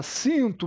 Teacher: Eu tenho um fonema C Eu tenho um fonema i anasalado